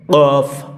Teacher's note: কফ এটি জিহ্বার গোড়া থেকে মোটা হবে জিহ্বার গোড়া থেকে একটু এরকম শব্দ হবে